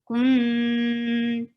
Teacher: You have to circle your lips and hide noon and don't pronounce it with your tongue. Kun, just hold the sound in your nose. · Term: gunna